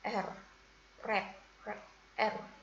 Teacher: The example is sound R at the beginning of red. It is formed with the tongue tip raised and curled back near the alveolar ridge. Jadi contoh bunyi R itu masuk dalam contoh manner of articulation liquids.